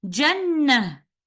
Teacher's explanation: And other than this ayah, the word Jannah is always written with ta marbuta at the end, where upon continuation we will recite ta marbuta with the accompanying vowel, and upon stopping we will stop with ha sakina